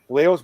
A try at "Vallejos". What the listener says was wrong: You have to do a better pronunciation about Kevin's last name. Vallejos. Yeah, because the double L in Argentina is sh, so it's Vallejos.